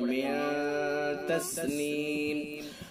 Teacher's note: اخفاء حقیقی ہوگا غنہ کے ساتھ. ناک کے بانسے سے ادا کر کے پڑھیں گے